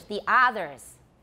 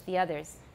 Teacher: longer listen here's taiwan english the others american english the others the taiwanese version is very long but it should not be long it's a wrong vowel